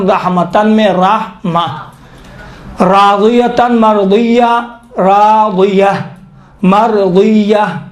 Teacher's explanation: وقف کے دوران اس تا کو تبدیل کرتے ہیں کس میں؟ ہا میں، ہا سخت میں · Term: وقف ابدال